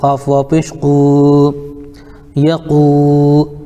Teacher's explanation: واو ساکن سے پہلے قاف کے اوپر پیش ہے اس لیے واو مدہ ہوگا، ان کو تھوڑا کھینچ کر پڑھیں